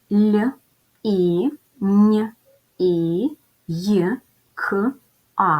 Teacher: перший звук ль він м'який тому що далі йде буква і другий приголосний звук нь він